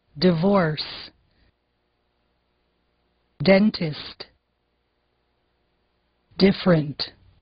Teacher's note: usem o t e o d antes do som de i em inglês como esse pessoal dessa outra região que fala tigre e dia